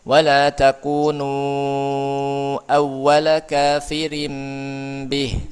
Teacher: takunu ini ada mad setelahnya bertemu dengan hamzah ya. Maka dia dibaca empat atau lima harakat namanya mad jajaiz munfasil. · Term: mad jaiz munfasil